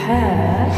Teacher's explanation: হায়ের মাখরাজ মধ্য কণ্ঠনালী একটু চাপিয়ে বলবে হা